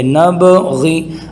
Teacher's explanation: نبغی، یہاں پر دیکھیے با ہے اور با حروف قلقلہ میں سے بھی ہیں اور اس کے اوپر جزم بھی ہے، لہٰذا خوب قلقلہ کر کے یوں پڑھیں گے